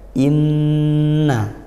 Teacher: dan ghunah itu makhrajnya dari kisyum dari lubang hidung maka masuk ke hidung ghunah apa Nun tasydid huruf nun dan mim yaitu dari hidung